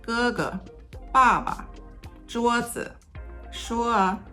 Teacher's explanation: When qingsheng appears after a tone 1, qingsheng tends to be lower in height.